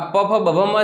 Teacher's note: બંને હોઠ ભેગા થવાના કારણે એ શું કહે છે? તો કે ઓષ્ઠ સ્થાન છે.